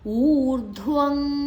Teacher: ಊ ದೀರ್ಘ ಧ್ ಮಹಾಪ್ರಾಣ